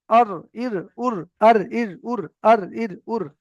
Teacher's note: দেখেন জিভটা ঘুরে যাচ্ছে, ঘুরে গিয়ে উপরের তালুর সঙ্গে লাগবে।